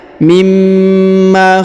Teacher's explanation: huruf Ma ditahan dan ditekan karena terdapat tanda tasdid